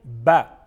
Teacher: دونوں ہونٹوں کے تر حصہ سے ادا ہوتا ہے